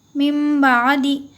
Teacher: اب یہاں پہ جو چھوٹا میم ہے ہم اسے پڑھیں گے، نون کی آواز کو ہم نہیں نکالیں گے، ہم میم کی آواز کو پڑھیں گے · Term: اقلاب